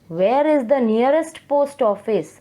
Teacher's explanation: Here you are asking a question, where is the nearest post office? So your tone has been fallen down. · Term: falling tone